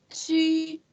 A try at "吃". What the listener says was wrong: 不 是 七 ， 吃 。 吃 ， 对 。 不 是 说 吃 。 吃 。